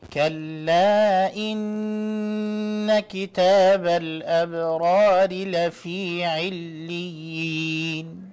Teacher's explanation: When you see the noon mushaddada after kalla, I would like you not to forget to make the ghunnah there.